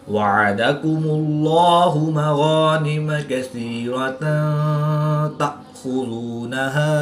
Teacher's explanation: حمزہ ساکن ہے تو اس کو حلق کے نیچے والے حصہ سے ادا کریں گے اور اس کو جھٹکا بھی دے کر پڑھیں گے